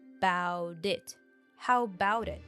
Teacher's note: the T sound before the vowel turns into a D sound